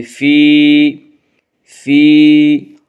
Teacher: یا مدہ کو 1 الف کے برابر کھینچ کر پڑھیں گے